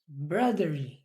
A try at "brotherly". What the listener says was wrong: Put out your tongue. I can't see your tongue. Again, brotherly.